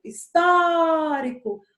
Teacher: onde foi que eu passei mais tempo? No tó. O tó é a antepenúltima sílaba da palavra. Então, ela vai ser considerada uma proparoxítona.